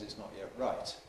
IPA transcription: ɪʔs ˈnɒʔ jeʔ ˈraɪt